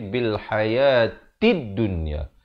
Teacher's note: Hayatid, ta barikasroh naik di atas dal yang bertanda sabdu. Di sini alif lam syamsiah, lam tidak dibunyikan. Jangan baca bil hayatil dunya, tapi bil hayatid dunya.